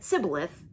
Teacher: they said it without the sh sound it would sound like sybileth